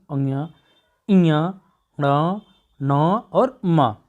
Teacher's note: हम देखेंगे पांचवा वर्ण, हर वर्ग का पांचवा वर्ण देखेंगे, अंग्या, इया, ण, न और म। हम इसको भी बोल रहे हैं तो क्या हो रही है, श्वास कम निकल रही है, इसलिए कहा गया कि क्या है, ये अल्प प्राण है।